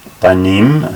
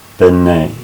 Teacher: So here's the place where talking about the construct chain, and it says the masculine and plural im endings are replaced by just that, so the m drops off. So banim, sons, becomes bene, sons of, and the vowel shortens from a to e